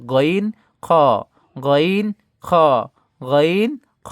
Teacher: হলকের শেষ ভাগ হইতে গইন খ